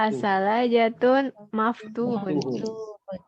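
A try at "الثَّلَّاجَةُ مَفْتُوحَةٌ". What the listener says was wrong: Nggak pakai tanwin. Kan udah pakai alif lam. As-salajatu.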